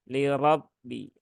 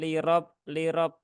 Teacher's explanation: huruf ro ini harakatnya dia fathah maka dia dibaca dengan tafkhim ya dibaca dengan tebal